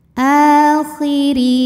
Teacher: huruf ro dibaca secara tarqik karena harakatnya kasrah